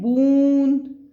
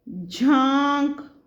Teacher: चंद्र बिंदु वाले शब्द हमारे का जब हम उच्चारण करते हैं, तो हमारी नासिका और तालु से, मतलब जीभ हमारी तालु से ही मिलती है, और ध्वनि हमारी नासिका में से आती है।